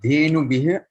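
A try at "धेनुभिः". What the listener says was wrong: The visargaha is not a ha. So when you say the visargaha as a ha, you will say dhenubhiha. But visargaha is an expelling of breath on an open mouth. Your mouth was open in the E shape when you did bhi. So the visargaha will be bhihi. So dhenubhihi.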